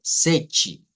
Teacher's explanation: Y en este, Sechi, la sílaba tónica es la primera.